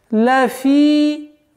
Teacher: Лафи, здесь естественное удлинение в размере двух огласовок, кесры. Лафи, хуср.